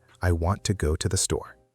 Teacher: And the unstressed words are I, to, to, and the. · Now the stressed words are want, go, and store. Those are the important words, the words you really need to hear. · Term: stress-timed rhythm